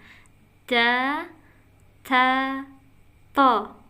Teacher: Jadi ke bawah. To menyentuh pangkal gigi seri bawah.